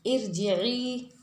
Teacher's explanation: ارجعی کے را سے پہلے زیر آ رہا ہے تو اس را کو باریک پڑھنا ہے۔ اب ہم غلطی کیا کریں گے، ارجعی پڑھیں گے تو یہ لحن خفی ہو جائے گا۔